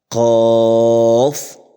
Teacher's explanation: اور اس کے بعد قاف، اس کا نام ہے حروف لہویہ۔ حروف لہویہ زبان کی جڑ اور تالو کے نرم حصے سے ادا ہوتا ہے